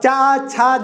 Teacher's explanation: ये जब भी बोलेंगे आप चा, छा, जा, तो जीभ आपकी लगातार तालु पे ही लगेगी, और यहां से आपको पता चल जाएगा तालु कहां पे, ठीक है।